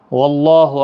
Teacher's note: اللہ کا لام زبر کی وجہ سے پور ہوگا